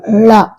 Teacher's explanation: நாவின் நுனி மேல் நோக்கி வளைந்து வருடுவதால் லகரம் தோன்றும். லா தமிழுக்கு உரித்தான சிறப்பு ஒலி, எனவே இதனை சிறப்பு லகரம் என அழைக்கிறோம்.